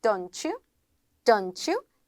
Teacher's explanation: T 사운드랑 Y 사운드가 들어갔으니까 치읓 소리 나야 되겠죠.